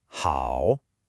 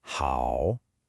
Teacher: Remember that dipping and then rising pitch. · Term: third tone